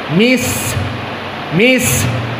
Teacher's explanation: maka Sin di sini sifatnya adalah alhams dan alhams sifatnya keluar nafas